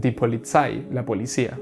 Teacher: la z no es Z sino que más bien Es como una ts